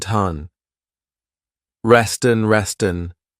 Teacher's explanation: I'm linking the 2 words together and I'm transferring the T sound onto the vowel